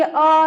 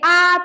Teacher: बोलेंगे अ तो एक ही मात्रा हुआ। बोलेंगे आ तो अधिक मात्रा हुआ